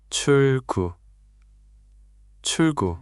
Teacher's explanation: So it's not 출구 with a hard break. It's more like 출구 with the L flowing into the G.